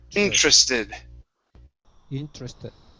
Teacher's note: with the TR, what you want to pronounce is a CHR sound